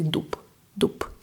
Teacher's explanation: Even though there is bbb at the end, but we say dup dup.